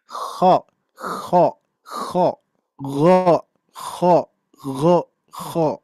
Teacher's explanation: Langit-langit ini nih ya, kalau di lidah itu kan ada langit-langit ya. Jadi mengangkat pangkal lidah ya, menempel ke langit-langit dan akan menghasilkan bunyi yang tebal. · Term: isti'la